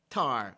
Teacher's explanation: the word tar is normally pronounced with a stronger puff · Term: aspiration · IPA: [t]